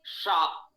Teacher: ऊष्म वर्ण भी कंठ स्थानीय कोई वर्ण नहीं है, तो ये भी तालव्य से प्रारंभ होगा। शा तालव्य है, जिह्वा तालु की ओर जा रही है